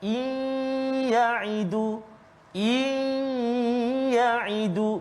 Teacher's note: Masukkan nun mati ke dalam ya dengan dengung berserta dengung. Iyaidu dua harakat dia. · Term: idgham aa maal ghunnah